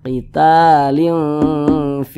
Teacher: didengungkan itu ya suaranya kita tahan ya kita panjangkan sejenak panjangnya itu dua harakat